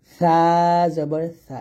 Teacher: জিহ্বাটা কোনোভাবেই আপনি নিচের দাঁতে লাগাবেন না, জিহ্বার আগাটা আপনি উপর দাঁতের আগার সঙ্গে লাগাবেন, পাতলা করে বাতাস বের করে উচ্চারণ করবেন